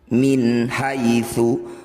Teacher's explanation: nun sukun bertemu ha disebut bacaan izhar halq bunyi nun sukun baca dengan jelas tidak usah dengung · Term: izhar halki